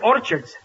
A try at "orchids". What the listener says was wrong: it's not Orchards it's orchids the CH is pronounced by K